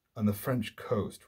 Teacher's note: On the French coast, right, you have a pairing of the pyrrhic on the, right, two unaccented syllables, and then French coast, two stressed syllables, spondi, pyrrhic spondi, an old poetic trick which makes one foot very light and then the following foot very heavy.